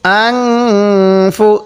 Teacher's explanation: নুনের সাথে এবার আপনি বলেন তো এখানে গুন্না কেন করলাম হ্যাঁ নুন সাকিনের পরে ফা টা হলো ইকফার হরফ এজন্য আমি এখানে গুন্না করছি